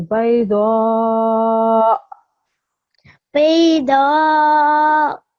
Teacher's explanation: just remember to give a slight jerk at the end to make sure that everybody can hear the hamza sound